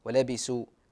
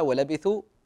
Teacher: احرص عاد في الثاء انك تنطقها ثاء يعني بعض الناس ينطقونها سين